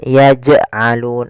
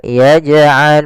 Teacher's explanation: Jim ada bacaan Qalqalah yaitu huruf jimnya memantul maka dipantulkan huruf jimnya yaitu tapi dengan syarat tidak ada tambahan